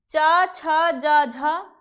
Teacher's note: व्यंजन कौन से हैं च वर्ग व्यंजन तालव्य व्यंजन कहलाते हैं च वर्ग जो है उनका उच्चारण करने के लिए हम ताल का सहारा लेते हैं